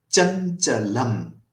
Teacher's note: in chanchalam, chan is guru, cha is laghu, lam is guru. So chanchalam will be guru, laghu, guru.